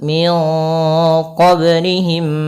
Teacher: mim mati bertemu mim ini harus ditahan suara mimnya karena ada pertemuan di antara dua mim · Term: idgam mimi